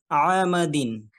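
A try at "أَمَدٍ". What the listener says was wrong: তে টান হয়ে গেল একটু। টান ছাড়া দ্রুত পড়তে হবে।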